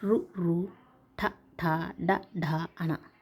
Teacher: పరివేష్ట జిహ్వాగ్రమును మూర్ధన్యాన్ని పరివేష్ట జిహ్వాగ్రమును తాకుతూ పలికేవే మూర్ధన్యాలు. అంటే నాలుకను మడత వేసి వెనుకకు తిప్పి పలికేవండి